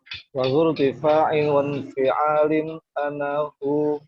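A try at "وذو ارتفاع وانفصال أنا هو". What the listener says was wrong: Wan fisolin. Cuma tadi yang tuh bacanya wan fi'alin tadi, bukan wan fisolin.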